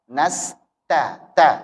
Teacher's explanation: Jangan lupa berikan sifat hamsnya pada huruf ta.